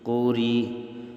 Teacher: اس لفظ میں را کے نیچے زیر ہے تو ہم نے را کو باریک پڑھا